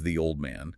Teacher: you stretch old. You physically link it to man.